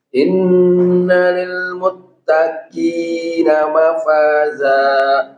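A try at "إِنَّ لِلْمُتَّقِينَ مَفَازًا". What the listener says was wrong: Ya, jadi coba ko, ki, masih keluar udara. Ki, muttaqina mafaza. Muttaqi. Masih muttaqi. Inna lil muttaqina mafaza. Jadi usahakan dari pangkal lidah yang paling dalam. Inna lil muttaqina mafaza.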